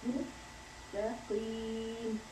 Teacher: the sod is a heavy letter, whereas seen is not a heavy letter.